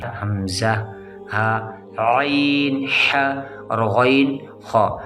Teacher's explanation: یہ حلق سے نکل رہے ہیں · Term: حروف حلقی